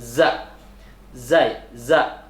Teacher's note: bunyinya keluar dari ujung lidah serta menempati ujung dua gigi seri yang bawah